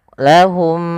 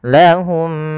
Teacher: kita mengidghamkan mim yang pertama kepada mim yang kedua dan ditahan suara nya atau suara mimnya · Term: idgham mimi